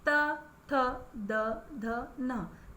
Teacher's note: आपकी जीभ त दांतों को स्पर्श करेंगी, इसलिए इसे दंत्य कहते हैं